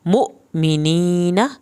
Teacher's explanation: नून की ज़बर को लंबा नहीं करना